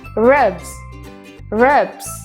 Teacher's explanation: Kata robe diakhiri dengan suara B. Yang mana S-nya harus diucapkan dengan cara Z.